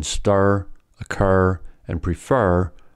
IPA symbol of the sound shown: ɜr, ɝ